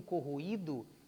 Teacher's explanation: notaram que o I do corroído é a sílaba tônica da palavra? Ele é pronunciado de maneira tônica, de maneira forte? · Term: hiato